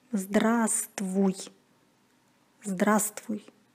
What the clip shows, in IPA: zdrAstvuj